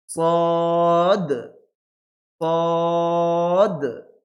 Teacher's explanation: লাস্টে এই সদ অক্ষর উচ্চারণ করার সময় লাস্টে কি হবে, একটা কলকলা হবে। কলকলা বলতে আওয়াজটা মনে হবে যে ইকো হচ্ছে, মানে ধাক্কা লেগে ফেরত আসছে এরকম মনে হবে।